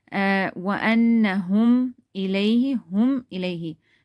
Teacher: Any of the other haruf, if comes after meme silent, what are we going to do is we're going to do izhar. We're going to read it very clearly. No gunna, no ikhfa.